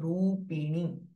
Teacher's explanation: दिस रू इज दीर्घ रूपिणी एंड नी दीर्घ विथ नेजलाइज साउंड